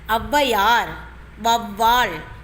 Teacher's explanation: இந்த சொற்களில் முதலில் வரும்போது ஔகாரமானது தனக்குரிய 2 மாத்திரை அளவிலிருந்து குறைந்து 1 மாத்திரை அளவாக ஒலிப்பதை நம்மால் காண முடிகிறது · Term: ஔகார குறுக்கம்